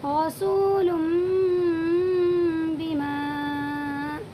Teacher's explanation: دو پیش کی تنوین کے بعد یہ با آیا ہوا ہے، اسی لیے تنوین کی آواز کو میم میں بدل دیں گے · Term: اقلاب